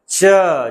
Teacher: संघर्ष मतलब बड़े संघर्ष के साथ निकलते हैं। च जिसे च बोलने पे लग रहा है छू भी रहा है लेकिन इतना संघर्ष करके रगड़ते हुए निकल रहा है।